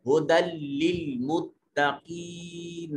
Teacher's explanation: नून को लाम से मिलाकर पढ़ेंगे